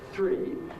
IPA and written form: θriː (three)